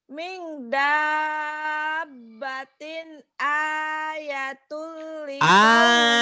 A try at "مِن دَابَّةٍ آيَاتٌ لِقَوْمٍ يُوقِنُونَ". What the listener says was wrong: ayat panjang panjang. Min dabbatin ayat panjang panjang.